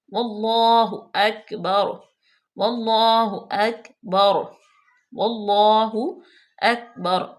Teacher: کاف پہ قلقلہ بالکل نہیں کریں گے، بالکل جما کے پڑھیں گے